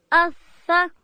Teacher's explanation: ثا ادا کیږي د ژبې سر به د لوړې زامې د مخ د دوو غاښو و سرو ته ورړو.